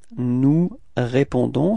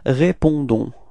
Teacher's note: final S is not pronounced, okay? So the only thing that is pronounced at the end, it's this O-N and it's on